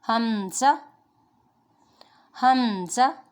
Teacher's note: حمزہ بھی حلق کے نیچے والے حصے سے ادا ہوتا ہے